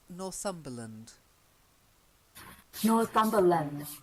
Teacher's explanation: when it's a place name, the land bit often becomes the schwa Lund. So try it.